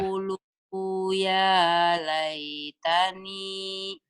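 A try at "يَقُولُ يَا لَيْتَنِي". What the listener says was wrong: Lu-nya pendek, Bu. Yaqulu ya gitu, Bu. Yaqulu ya laitani.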